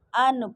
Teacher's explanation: नून साकिन के बाद अगर आइन इसी हुर्फ में आ जाए तो जो है यहाँ पे इजहार का कायदा हो रहा है, यानी कि इजहार का मतलब है इजहार करना, यानी इसमें गुन्ना नहीं करेंगे